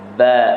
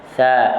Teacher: Contoh ba dia tertahan, tapi sa dia tidak tertahan. Jadi suara terlepas sepenuhnya, iaitu rakhawah.